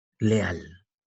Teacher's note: La mayor fuerza de voz está en al.